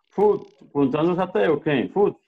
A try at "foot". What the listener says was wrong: Sí, pero casi no se te escucha la T.